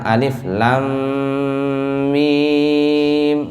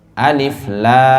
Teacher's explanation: La-nya yang dipanjangin, matnya itu yang dipanjangin. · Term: 6 harokat